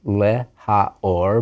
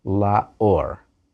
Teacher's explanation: Because when you have a letter with a shva underneath it, followed by a hey with another vowel underneath it, the shva and the hey disappear. They're elided.